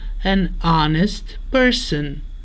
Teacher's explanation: The H here is silent, and the word starts with a vowel